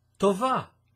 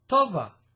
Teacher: If you put the accent on the first syllable of the word, this becomes a girl's name in Hebrew.